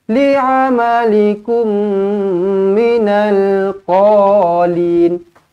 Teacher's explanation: Terus rapatkan bibir, jumpa dengan mim sabdu, dah tak payah fikir apa-apa. Rapatkan bibir, dengungkan 2 harakat.